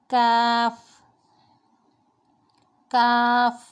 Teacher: زبان کی جڑ اور تالو کے سخت حصے سے کیف ادا ہوگا